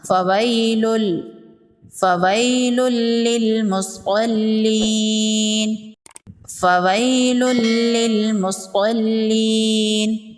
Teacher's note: یائے لین کو نرمی سے پڑھتے ہیں اور جلدی پڑھتے ہیں۔ تنوین کے بعد حروف یرملون میں سے لام ہے، یہاں پر ادغام ہوگا بلا غنہ۔